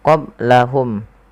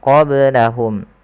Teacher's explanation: Nah, ketika melafalkan qaf lebih tebal sedikit. Kemudian qablahum ada ba sukun maka dibaca dengan qalqalah.